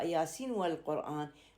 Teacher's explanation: النون الساكنة بياسين لا تدغم مع الواو بالآية الثانية